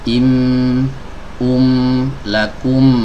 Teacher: huruf mim yang sukun itu keluar karena ada pertemuan dua bibir